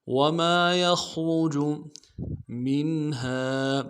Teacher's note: میم کو نون ساکن کے ساتھ ملانا ہے، نون ساکن میں اظہار ہوگا، ہا کے ساتھ الف مدہ ہے، ایک مقدار میں کھینچیں گے۔